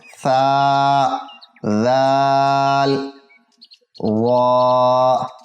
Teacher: نرمی والے حروف 3 ہیں، تینوں زبان کی نوک اور ثنایا علیہ یعنی اوپر کے 2 دانتوں کے کنارے وہاں سے پڑھے جاتے ہیں